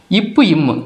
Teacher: இப்பு இம்மு ரெண்டு லிப்ஸையும் க்ளோஸ் பண்ணுறப்ப பிறக்குது